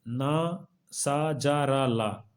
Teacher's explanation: इनका स्थान दांतों के पीछे का कठोर हिस्सा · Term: वर्स व्यंजन, वर्त्स वर्ण